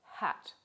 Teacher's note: there's a voiceless glottal fricative as in the word hat